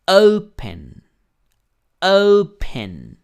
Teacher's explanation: En realidad es la O. La O es la que tiene mayor fuerza de voz. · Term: sílaba tónica